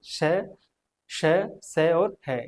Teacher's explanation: और उष्म व्यंजन श, श, श और है यह उष्म व्यंजन है क्योंकि इनका जब उच्चारण करते हैं तो ऊष्मा बहुत ज्यादा मात्रा में घर्षण के साथ मुख्य विवर से बाहर आती है